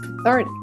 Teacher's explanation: I know that I should put the stress on the second syllable